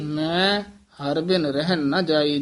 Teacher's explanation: ਜਿੱਥੇ ਮੈਂ ਮੇਰੇ ਦਾ ਵਾਚਕ ਹੈ ਉੱਥੇ ਨਾਸਕੀ ਬੋਲਿਆ ਜਾਏਗਾ ਕਿਉਂਕਿ ਮਮਾ ਹੈ ਹੀ ਨਾਸਕੀ ਅੱਖਰ